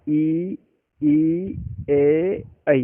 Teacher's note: जीभ का आगे वाला ही भाग काम में आता है। आप थोड़ा सा बोल के देख लीजिएगा, अ, ई, ए, ऐ। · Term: अग्र स्वर